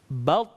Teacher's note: saat mati terdengar ada suara yang mantul